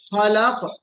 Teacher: اور ما خلق میں جو خا ہے نا اس خا کو پر پڑھنا ہے